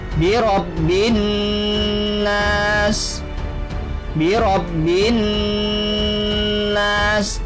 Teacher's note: Cara membacanya dengan dengung serta ditahan 3 harakat. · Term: gunnah